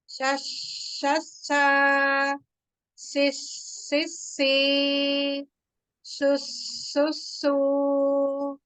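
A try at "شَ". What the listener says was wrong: Nah, ke tengah lidah, Ukti, ke tengah lidah. Lidah tengahnya naik. Lidah ya, yang tengah naik. Sama seperti huruf jim kemarin. Sama seperti huruf iya ya. Coba iya itu naik ya tengah lidahnya ya sama di situ. Sya. Jadi bukan sia, sia, sia gitu ya. Tapi di tengah sya, sya. Esh gitu. Esh. Sya. Sya. Nah, jadi jangan ya, tapi sya di tengah. Ya ini ada sebar ya, ada penyebaran udara di situ nanti di mulut ya. Sha, shi, shu.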